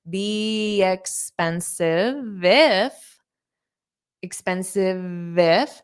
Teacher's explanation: So you can hold out that V sound and connect it to the if.